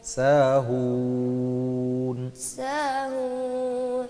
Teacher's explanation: ہوں پہ ناک میں نہ جائے آواز، ہوں پہ نہ جائے، اینڈ پہ جائے گی جب نون آئے گا، اس سے پہلے نہیں